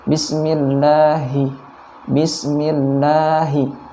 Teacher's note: dibaca tipis kemudian dipanjangkan 2 harokat